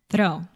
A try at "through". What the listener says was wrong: Close. Close. So, if we add an R, then we have the word through.